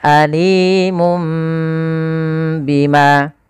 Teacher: Awalnya suara nun, alimun bima diganti dengan mim. Maka itulah namanya iqlab, mengganti suara nun diganti suara mim.